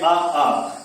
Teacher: तो आपका गले से उच्चारण, कंठ से उच्चारण हो रहा है, इसीलिए इसको क्या कहते हैं, कंठ स्वर कहते हैं।